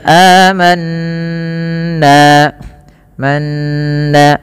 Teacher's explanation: tahan bunyi suara nun ketika nunnya berharakat tasydid dan dibaca dengan bacaan gunnah